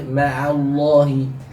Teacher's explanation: Tipiskan dulu huruf ain, lalu ada huruf lam yang memang di situ ada lafzul jalalah, harus dibaca dengan mufakhomah ya, karena sebelumnya fathah.